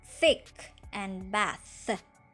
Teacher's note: are made with the tip of the tongue between the front teeth